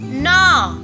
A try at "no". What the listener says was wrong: பாத்தீங்கன்னா ஆங்கிற மாதிரி சொல்லக்கூடாது, ஓ ஆ